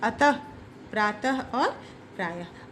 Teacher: विसर्ग, इसका उच्चारण ह की भांति होता है